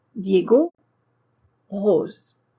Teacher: Notice the letter O in French is just one sound. It's two sounds in English, O, and one sound in French, O.